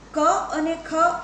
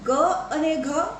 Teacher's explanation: પણ જ્યારે નાદતંત્રીઓની અવસ્થાને આપણે ધ્યાનમાં લઈએ ત્યારે એ ક અને ખ અઘોષ ધ્વનિઓ છે, પણ ગ અને ઘ એ ઘોષ ધ્વનિઓ છે.